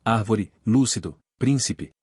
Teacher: São as palavras em que a antepenúltima sílaba é tônica. Todas as palavras proparoxítonas são acentuadas, independentemente de sua terminação, por exemplo, árvore, lúcido, príncipe.